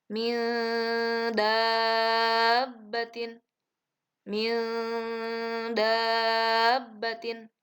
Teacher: harus sedikit ditahan dan berdengung.